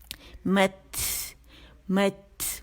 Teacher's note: اور تا ساکن ہے، تا میں شدہ ہے، یاد رکھیے گا، تو اس میں ہمس واضح ہوگا کیونکہ آواز پہلے سختی سے بند ہو جائے گی، ایئر پریشر بڑھ جائے گا، جو ایئر پریشر ختم ہوگا تو ہمس یعنی وائس لیٹر ہے تو اس کو ظاہر کرے گا.